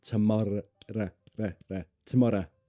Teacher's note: notice the r sound is more of a flappy R tomor tomorrow and not o but a tomorrow uh tomorrow exactly